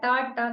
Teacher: the Ta, Ta coming from the Murdha, the cerebrum